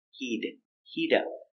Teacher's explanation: We pronounce our T with a fast D sound.